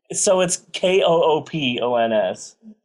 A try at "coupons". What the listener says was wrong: You make it sound like there's a Q in there. There's not. It's coupons.